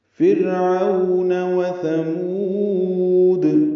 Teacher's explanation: فرعون میں را باریک ہے، اس سے پہلے زیر آنے کی وجہ سے عو مولین ہے، ہونٹوں کو آگے لائیں گے، نہ تمام گول کریں گے۔ و ثمود، واو جلدی پڑھیں گے، تھا نرمی سے پڑھیں گے، میم کو لمبا کریں گے اور دال ساکن پہ قلقلہ ہوگا۔